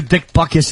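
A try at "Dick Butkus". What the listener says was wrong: There's a T in there.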